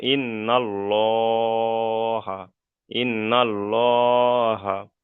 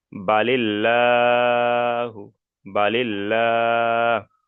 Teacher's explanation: জবার অথবা পেশ থাকে তাহলে আল্লাহ শব্দকে পুর অর্থাৎ ল করে পড়তে হবে